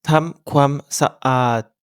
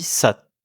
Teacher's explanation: en thaï, pas de liaison entre les syllabes, surtout avec ohang, qui force à faire une micro-pause